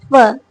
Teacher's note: in the production of fur sound, my passive articulator or my passive organ is my upper teeth. Okay, because my upper teeth cannot move from its place. · Fur means when my active articulator, that is my lower lip, is going toward or closing toward my passive articulator, that is my upper teeth. So here as a result sound produced.